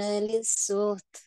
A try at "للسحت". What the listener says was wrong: عليك للسحت، للسحت يعني نحقق حرف الحاء. ليس للسحت، للسحت هكذا. نعم، لأن الحاء فيها صفة الهمس وهي ساكنة، فلا بد أن نظهرها ولا يعني تكون قريبة إلى حرف الهاء، لا نقول للسحت هكذا، لا نقول للسحت هكذا.